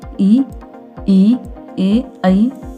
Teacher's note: अग्र स्वर, जिन स्वरों के उच्चारण में जीभ का अग्र मतलब आगे का भाग काम करता है